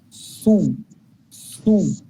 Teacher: پہلے میں صاد کی آواز کو پڑھنا شروع کرتا ہوں پھر ہونٹوں کو گول کرتا ہوں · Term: پیش والی آواز